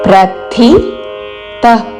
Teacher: ప్ర పక్కన మహాప్రాణ అక్షరము థ దాని తర్వాత అల్పప్రాణ అక్షరము త రెండు మహాప్రాణ అక్షరములతో పలకకూడదు రెండు అల్ప ప్రాణ అక్షరములతో పలకకూడదు ప్రతి థి